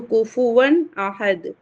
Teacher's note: اور دال پر قلقلہ ہوگا